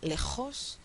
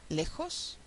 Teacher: la J castellana que se produce un poquito más atrás que la J mexicana